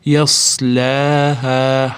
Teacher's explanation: haadan keyin ham alif ham tepasida to'lqin, ya'ni orqasida hamza kelgani uchun madd munfasil kelyapti. Besh olti deguncha cho'ziladi.